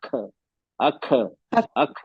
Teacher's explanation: आपने अपने मखरज को जबान मखरज से हटा दी बिना एयर फ्लो किए हुए तो आवाज पलट जाएगी और ये कलकला हो जाएगा